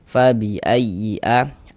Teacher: A dibaca panjang. Ini namanya adalah mad badal panjang dua harakat.